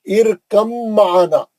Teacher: अब बा नहीं पढ़ेंगे, बा साकिन है ना, छोड़ देंगे। इरकम, सीधा मीम में चले जाएंगे, गुन्ना करके पढ़ेंगे। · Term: बा का इदगाम